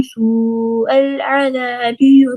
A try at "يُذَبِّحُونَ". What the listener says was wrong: युज़ब्बिहून, बा के कसरे को लंबा नहीं करें। युज़ब्बिहून